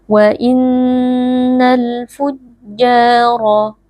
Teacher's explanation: dibaca sukun dengan jelas kemudian ja di sini ada Mad Thobi'i dibaca panjang dua harakat karena ada Alif yang sebelumnya berharakat fathah wa Innal fujjaro huruf ro Huruf tebal dibaca dengan mengangkat pangkal · huruf ra, huruf tebal dibaca dengan mengangkat pangkal lidah. Lafi, di sini ada mad tabi'i karena ada ya sukun sebelumnya berharakat kasrah, dibaca panjang 2 harakat.